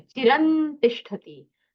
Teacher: चिरम अनुस्वार के आगे टकार है तो नकार का अनुस्वार का उच्चार होना चाहिए। मतलब अनुस्वार जो है वो नकार जैसे उच्चारण करना है।